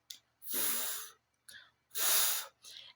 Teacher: You just pushed air through a small tiny gap between your lip and teeth. A steady friction sound. No voice, just air.